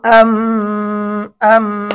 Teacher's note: হরকতের বামে মিমে তাসদিদ হয়েছে, ওয়াজিব গুন্না হবে।